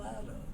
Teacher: The L sound moves over, so you get roll out. The T goes over and becomes a soft D